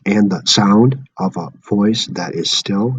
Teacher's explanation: And the sound of a voice that is still, that's unstressed, unstressed, stressed.